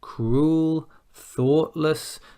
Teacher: Cruel, thoughtless, you start on a mid-tone, and then we go up.